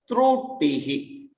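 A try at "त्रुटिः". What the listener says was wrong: Wherever you are stressing through tihi, visarga. Visarga nahi aayega.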